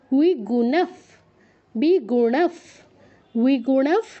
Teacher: ণ এর উচ্চারণ শুনেই যেন সবাই বুঝতে পারে এটা মূর্ধন্য, আর বিসর্গর জায়গায় পরে যেহেতু প আছে তাই ফয় হসন্ত উচ্চারণ হচ্ছে।